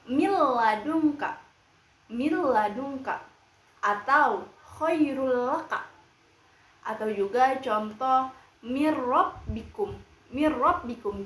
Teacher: cara kita membaca idgam bilaguna ialah dengan memasukkan sepenuhnya huruf nun sukun atau tanwin kepada huruf idgham bila gunah, yaitu lam atau ro.